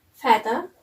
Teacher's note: it's a voice sound and it's place of articulation is Dental